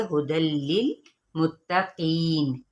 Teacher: फीह हुदल लिल मुत्तकीन, हा की पेश को हम लंबा नहीं करेंगे और तनवीन ज़बर को लाम के साथ मिलाएंगे। तो यहाँ पे इदगाम बगैरुल गुन्ना यानी हुदल लिल, ये नहीं हमने पढ़ना कि हुदल लिल, ये गलत तरीका है।